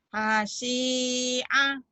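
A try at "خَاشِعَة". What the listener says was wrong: Itu bukan ha, tapi khoir. Khoir. Khosyi'a. Khasyi'a.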